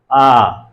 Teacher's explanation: जो आ स्वर है जब हम उच्चारित करते हैं तो हमारा मुख क्या होता है? पूरे का पूरा खुला रहता है। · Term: विवृत स्वर